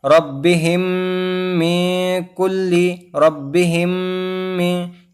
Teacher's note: یہ قاعدے کا نام ہے ادغام شفوی، یعنی ساکن والے میم کے بعد تشدید والا میم آ جائے تو میم کو میم سے ملا کر غنہ کے ساتھ پڑھیں گے